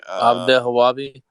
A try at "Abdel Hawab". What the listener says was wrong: Hawabi. There's just B at the end, so it would be Abdel Hawab.